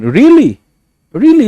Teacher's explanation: Try really with a rising intonation.